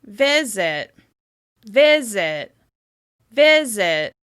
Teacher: As you can hear, the first syllable is stressed. · The /ɪ/ sound is more clear and more obvious on that first syllable